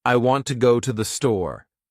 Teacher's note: the words want, go, and store have more stress because they carry meaning